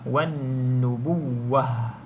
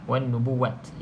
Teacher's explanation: kalau berhenti pada ta yang bulat ni, ta bulat ni bunyinya seperti huruf ha.